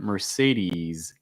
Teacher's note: That last S is slightly voiced, so you should feel some vibration in your throat when you say that.